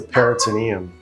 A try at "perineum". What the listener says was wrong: It's perineum. Perineum. You're just adding a T.